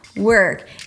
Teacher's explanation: Work, round your lips for a W and then pull the tongue in immediately for an R.